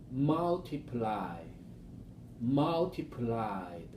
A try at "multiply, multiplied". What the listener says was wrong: There, now you got it.